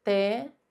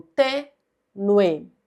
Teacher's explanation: A gente separa assim, tênue. Então, nós pronunciamos o U e o E como um ditongo